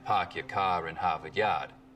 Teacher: meaning no r sounds in park your car and harvard yard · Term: non-rhodic